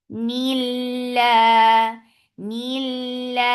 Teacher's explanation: lafz jalala will be light because there is kasra before it. Whenever there is kasra before Allah subhanahu wa ta'ala's name, that will be light.